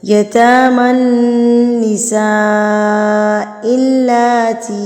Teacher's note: لام کے اوپر کھڑی زبر ہے تو اس پر آپ نے اگنور نہیں کرنا ہے. اس کو کھڑی زبر کو 2 حرکات کے برابر آپ نے اس کو لازمی لمبا کرنا ہے